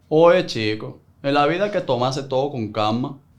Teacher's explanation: People often say Cubans, for example, sound like they're speaking Spanish with a potato in their mouth. It's a wide, breathy pronunciation